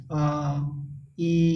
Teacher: दीर्घ स्वर जिनमें हमारा मुख द्वार पूरा खुलता है